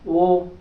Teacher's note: बोलकर देखिए, कंठ और ओष्ठ। ओ देखो, ओठ भी गोल हो रहे हैं, ओठ का भी जोर लग रहा है और कंठ से भी जोर लग रहा है। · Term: कंठोष्ठ